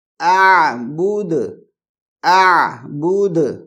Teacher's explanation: پھر ہے یہاں پر بھی اعبد نہیں، نہیں، حمزہ لائٹ ہے، حمزہ کو بالکل آہستہ سے پڑھیں گے اور ہلکی آواز میں پڑھیں گے، موٹی آواز میں نہیں پڑھیں گے، باریک آواز میں پڑھیں گے